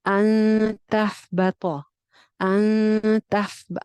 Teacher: इख्फा करेंगे, नून की आवाज को छुपा के पढ़ेंगे